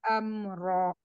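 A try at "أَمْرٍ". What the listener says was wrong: Amr. Amr. Jangan amro, amr, ya.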